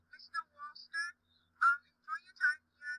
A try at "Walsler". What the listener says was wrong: It sounded like you said Mr. Walster. It's Mr. Walsler.